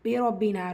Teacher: ரா ஃபத்தா பேச்சு வந்திருக்கு, வல்லினமாக ஓதணும்.